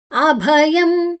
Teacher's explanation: ಇಲ್ಲಿ ಅಭಯಂ ಭಹಾಪ್ರಾಣ ಯದ ನಂತರ ಮ ಮುಂದಿನ ಅಕ್ಷರ ಸ ಇದೆ ಅಭಯಂ ಯದ ನಂತರ ಅನುಸ್ವಾರದ ಉಚ್ಚಾರಣೆ ಮ